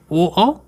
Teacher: ए कंठ तालब कहलाते हैं, ओ कंठोष्ठ कहलाते हैं